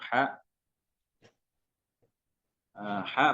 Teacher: rakwah yaitu suaranya terhembus ya mengalir beserta nafasnya mengalir kemudian istifal bukan istila atau tipis bukan tebal kemudian infitah ya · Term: huruf ha